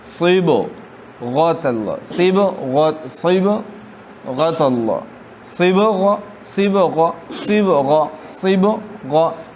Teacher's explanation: صاد اور غین کو پر پڑھنا ہے لیکن با کو باریک پڑھنا ہے